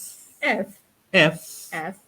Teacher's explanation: Hembusan angin keluar dari mulut. F. Gigi bahagian atas sentuh bibir di bawah.